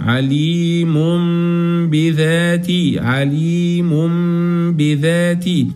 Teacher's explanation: جبنا ميم بدل النون هنجيب غنه كمان